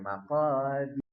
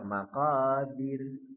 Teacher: Nah, ditipiskan roknya maqadir. Sebelumnya kasrah